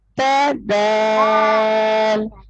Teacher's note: جیسے اوپر کے دانتوں کے اندرونی حصے سے جہاں سے زبان کو ٹچ کر کے تا پڑھا جاتا ہے، دال بھی ویسے ہی اسی جگہ سے پڑھا جاتا ہے